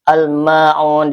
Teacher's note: Karena ada alif lam bertemu dengan huruf qamariah yaitu mim. Almaun dibaca jelas lamnya ya. Izhar. Tidak boleh mantul dan tidak boleh ditahan.